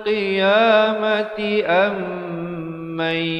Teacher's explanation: Qiyamati dengungkan di situ 2 harakat. Mim mati bertemu mim idgham mislan saghir, hukumnya dengung 2 harakat.